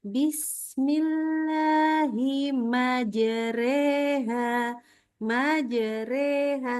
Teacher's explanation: Ini kan jimnya memang ada qalqalah, tapi jangan putus suaranya.